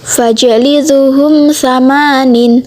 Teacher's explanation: Qalqalah sugro sebab huruf jim sukun asli, dan izhar syafawi sebab mim sukun bertemu huruf sa jadi dibaca jelas.